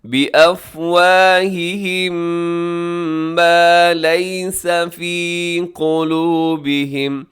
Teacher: جی آگے دیکھیے گا، یقولون بافواہہم ما لیس فی قلوبہم، یہاں افواہہم، میم ساکن کی بعد میم ہے تو یہاں پہ ہوگا ادغام شفوی